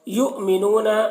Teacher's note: یہاں پر حمزہ ساکنہ ہے, جھٹکا لگے گا. منون نو میں واو مدہ ہے.